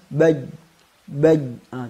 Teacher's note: Kita rasakan beneran ada pertemuan di antara tengah lidah dengan langit-langit atas. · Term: huruf jim